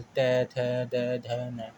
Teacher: जिन वर्णों का उच्चारण करने पर जीभ का अगला हिस्सा हमारे ऊपर के दांतों को स्पर्श करता है उसे हम दंतीय व्यंजन कहते हैं